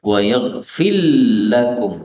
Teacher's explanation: Wa yaghfir menjadi wa yaghfil lakum ya, ra-nya hilang atau lebur menjadi lam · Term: idgham